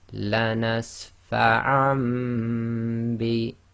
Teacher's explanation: the Noon Saakin in the Fathatain has been substituted for the Meme because it's followed by the Ba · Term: Iqlaab